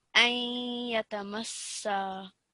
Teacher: you had the nasal sound come through, but it just needed to be a little bit longer